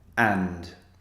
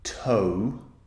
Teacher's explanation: The vowel sound is just one single sound, a. But if I say the word toe, for example, my big toe, O is actually two vowel sounds squeezed together.